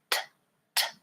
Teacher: Or, for example, the T sound, t, t, is made with contacting the tongue in a specific place in the mouth called the alveolar ridge behind the teeth. T, again, stopping the air and releasing.